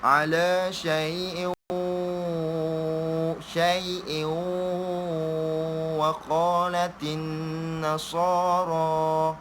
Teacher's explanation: Jadi kita kena memasukkan tu. Menghilangkan tanwin tu, memasuk ke dalam waw. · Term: Idgham memasukkan dengan dengung